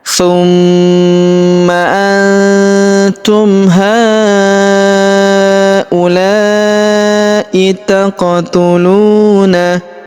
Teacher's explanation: huruf la kita panjangkan empat atau lima harakat karena di depan huruf la terdapat alif yang di atasnya terdapat tanda garis bacaan panjang empat atau lima harakat yang ini ya.